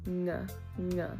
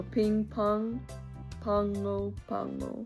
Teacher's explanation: G's aren't pronounced G, they're pronounced nga, nga. It's right there in the back of your throat.